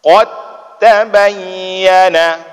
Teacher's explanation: artinya huruf Dal nya hilang ya tidak lagi dianggap langsung wadkar dan hati-hati ketika baca huruf ta itu jangan-jangan berangin